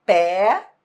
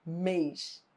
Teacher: No que diz respeito ao timbre, é que eles são diferentes. Pé tem timbre aberto. Mês tem timbre fechado. E é por isso que pé parece ser mais tônico do que mês, mas não é não.